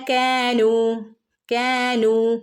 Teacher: കാനു ഇവിടെയൊക്കെ രണ്ട് അനക്കം നീട്ടി കൊടുക്കണം ട്ടോ സാധാരണമായ മദ്ദുകളാണ്